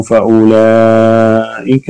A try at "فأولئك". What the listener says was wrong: فأولئك تحقيق الكسر فأولئك.